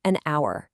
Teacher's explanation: Once again, the H takes a total backseat. It stays completely silent, and we're left with the vowel sound ow.